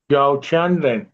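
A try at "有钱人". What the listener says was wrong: छानरन, याओ नहीं एक याओ नहीं कहना, यो कहना है।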